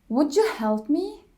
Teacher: when D followed by y it creates the J sound